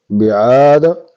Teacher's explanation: الف مدہ الف خالی آگے زبر ہے ایک الف کی مقدار اس کو کھینچیں گے